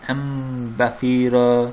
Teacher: sükunlu nun və tənvindən sonra bə hərfi gəlsə nun hərfi mim hərfinə çevrilir. Nəzərə alın ki, mimunə ilə oxunur. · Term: iqlab